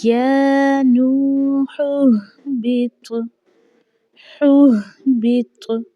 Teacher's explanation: طا کو بھی موٹا پڑھا جائے گا اور اس کے ساتھ آواز میں جنبش بھی آئے گی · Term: قلقلہ